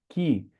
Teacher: Um K com H fica sopradão forte, é o som do Ki.